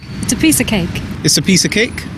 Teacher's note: the words a and of are both pronounced as a and they're not stressed